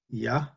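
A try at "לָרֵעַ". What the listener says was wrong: Ah. No, it's not like a yud. Ah. And the final chaf with a kamat is what?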